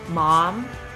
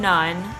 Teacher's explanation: English has three nasal consonants, the m as in mom, n as in none, and ng as in ring.